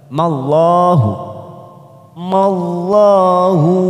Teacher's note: seperti Mekkah siap masuk kata huruf kahlallah dalam jalalah di sini karena didahului fathah maka kita baca tafkhim tebal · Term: tafkim tebal